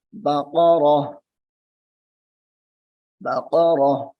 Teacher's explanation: ہم نے وقت کیا ہے یعنی رکے ہیں، ٹھہر گئے ہیں، تو اس تا کو ہا میں بدل دیں گے